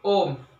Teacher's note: ओम के उच्चारण हम जितने समय में करते हैं उतने समय में हम ह्रस्व स्वर के 3 वर्ण एक साथ उच्चारण कर सकते हैं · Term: प्लुत स्वर